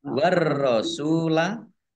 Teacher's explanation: ditandai ro-nya ada tasdidnya, ro-nya dibaca double.